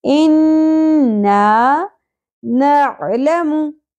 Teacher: انا نون مشدد پہ غنہ ہوگا, الف حرف مدہ ہے, ایک الف کے برابر کھینچنا ہے.